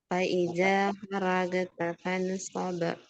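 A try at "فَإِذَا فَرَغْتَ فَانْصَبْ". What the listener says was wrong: Baik, barakallahu fikum. Ya, tadi yang terakhir adalah huruf sa dengan huruf sin beda ya.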